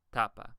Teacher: the second to last syllable is ta. And so that's where the stress is. I never say tapa.